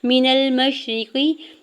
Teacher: میم کے زبر کو شین ساکن کے ساتھ ملاتے ہوئے پڑھیں گے. را کی زیر کو بغیر کھینچے ہوئے ادا کرنا ہے، قاف کی زیر کو بھی بغیر کھینچے ہوئے ادا کرنا ہے · میم کی زیر کو جلدی سے ادا کرنا ہے، نون کے زبر کو لام ساکن کے ساتھ ملاتے ہوئے پڑھنا ہے